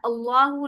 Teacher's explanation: अल्लाह के नाम से पहले जबर आ गई है, अल्लाह का नाम मोटा पड़ा जाएगा